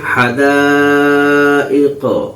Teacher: قاف چونکہ حروف قلقلہ میں سے ہے اس لیے یہاں پہ قاف پر قلقلہ ہوگا